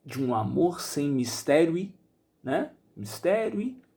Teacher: Repare que o final da palavra mistério e conjunção e vão ser juntadas. · ao declamar o texto de um amor sem mistério e sem virtude, esse de um fica junto. Então, eu vou juntar essas duas palavras em uma.